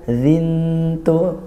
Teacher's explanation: tanwin bertemu tak, dibaca dengung, ikhfa haqiqi. Nah, langsung ke makhrajnya antara bunyi nun dari tanwin, kemudian ke tak.